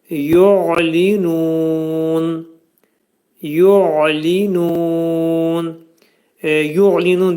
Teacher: Ayn hərfinin məxrəci boğazın ortasından çıxarılır.